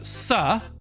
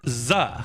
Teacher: And those are the same sounds, but Z is what we call voiced. So your mouth does the exact same thing with S and Z, except when you say Z, your vocal cords vibrate. And when you say S, they don't.